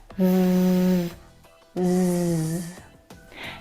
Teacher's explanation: Both of those sounds are voiced consonant sounds. So the sound is made here in your vocal cords.